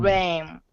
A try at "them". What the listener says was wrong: Now get that TH. That's what I'm missing here. Can you put your tongue under your front teeth and make this sound? Them. Yeah, I wish I could see your mouth, but them. We need to vibrate it. Them.